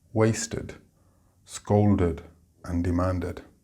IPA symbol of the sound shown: ed